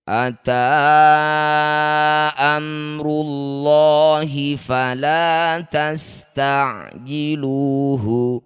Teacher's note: lafadz Allah didahului dhammah, maka lamnya baca dengan tafkhim atau dibaca dengan tebal.